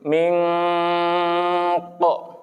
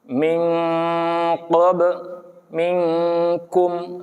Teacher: Seperti ming ko, udah masuk tuh. Malah wajib pakai eng dia kalau ketemu huruf qaf dan kaf. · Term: ikhfa